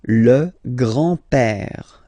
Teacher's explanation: remember, accent grave like that, it's this open père